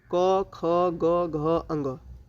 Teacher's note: इन सभी वर्ण का उच्चारण जो होता है वह होता है कंठ से। इसीलिए इसे कंठ्य वर्ण कहते हैं।